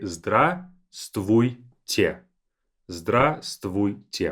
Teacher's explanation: Notice that this V is silent.